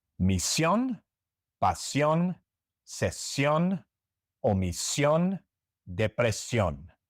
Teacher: pronounce them with a stress on the last syllable